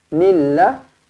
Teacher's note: lafzul jalalah dia baca dengan nipis kerana huruf sebelumnya berbaris bawah bukan nill tetapi nilla lillahi Wana minaliros bertemu Ik Hakiki dengungkan